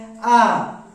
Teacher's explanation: आ बोलने के पश्चात हमारा होठ गोलाकार नहीं हो रहा है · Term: आवृतमुखी